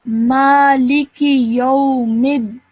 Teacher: when you join the meme to the dal, you do it with a bit of force because the dal has a shadda